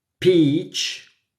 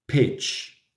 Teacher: un error muy común que cometemos en español y es que no diferenciamos de la i larga de la y corta